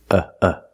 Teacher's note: The first syllable makes a sound uh like cup and up. Uh uh. This is a relaxed sound. Your mouth is almost closed.